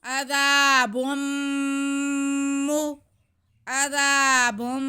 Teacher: बा पे पेश, दो पेश होने की वजह से ही मीम मुशद्दद है, क्योंकि तनवीन के बाद अगर मीम आ जाए तो इदगाम का कायदा होता है, इदगाम बिल गुन्ना। तो बा को हम गुन्ना करते हुए मीम से मिलाएंगे।